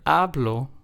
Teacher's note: in the word ablo we are stressing the second to last syllable so in this word since there's only two syllables this would